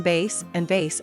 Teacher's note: a number of major Asian languages as well as Spanish are devoid of V sound, which is usually replaced with B, so for them bass and vase are the same